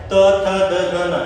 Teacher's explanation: सामने के दांतों को आपकी जबान चिपक रही होगी। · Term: दंते वर्ण